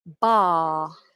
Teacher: You'll notice I'm not pronouncing the R, and I removed the letter R from the phonetics. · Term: non-rhotic